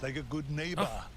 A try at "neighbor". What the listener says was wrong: I'm hearing nebor it's neighbor